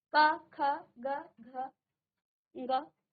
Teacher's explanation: कंठ व्यंजन, क्योंकि आपने कंठ से इनका उच्चारण किया है